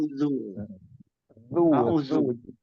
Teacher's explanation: ujung lidah atau toroful lisan itu bertemu dengan gigi seri atas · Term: zal